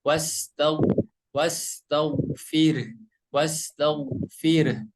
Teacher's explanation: Mungkin ada sedikit koreksi ketika membaca huruf ghain ya. Jadi huruf ghain itu berharokat sukun, tapi harus agak dialirin sedikit ya. Wastaghfir, wastaghfir, bukan wastaghfir, tapi harus dialirin sedikit.